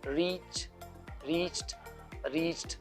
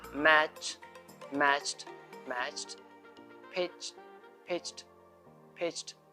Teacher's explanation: If a word ends with ch sound like reach, reached, reached, then the ed ending is pronounced t